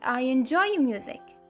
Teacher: music is my focus word the word that receives the most stress · i have to go up a little in order to come down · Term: falling intonation